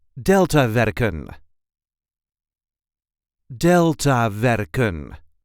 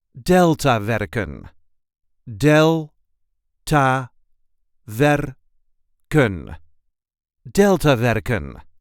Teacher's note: There is a light emphasis on the first syllable.